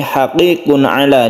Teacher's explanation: berasal dari makhraj tenggorokan atau alhalq maka dia sebut izhar halqi cara membacanya izhar yaitu jelas dan tidak berdengung